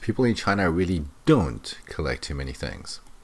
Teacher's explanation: notice the stress on don't